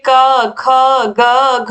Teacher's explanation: क वर्ग क ख ग घ और विसर्ग और ह का उच्चारण स्थान क्या होता है कंठ होता है